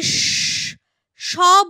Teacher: আমি যদি স বলি তাহলে একটা শীষ দেবার মতো আওয়াজ হচ্ছে যতক্ষণ আমার শ্বাস থাকছে ততক্ষণ সেগুলোকে টেনে উচ্চারণ করা যাচ্ছে সেই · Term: উষ্ম ধ্বনি